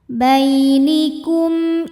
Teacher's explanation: cara membaca mim sukunnya adalah jelas atau terang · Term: izhar syafawi